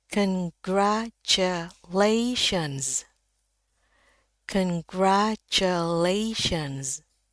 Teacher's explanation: Jadi, ada bunyi Z. S-nya saya ingatkan berubah menjadi Z